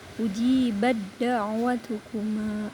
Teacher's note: huruf ta-nya dihilangkan, huruf ta-nya diidghamkan ke dal.